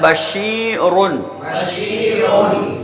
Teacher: شین کو ایک الف کے برابر کھینچ کر پڑھیں گے